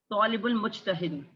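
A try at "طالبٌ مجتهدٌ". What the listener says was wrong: तालिबुल नहीं, तालिबुन मुज्तहिदुन। तालिबु भी नहीं, तालिबुन दो पेश लगाएं,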